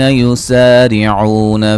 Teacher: را کو باریک پڑھیں گے، عو و مدہ ہے